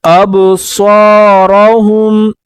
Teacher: اب صور میں با پر قلقلہ کریں گے، صاد کے بعد الف آیا ہے، ایک الف کی مقدار اوپر کھینچیں گے اور را کو بھی پر پڑھیں گے، جیسے اب صورہم.